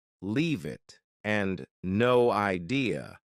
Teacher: both sound like they have no spaces between the words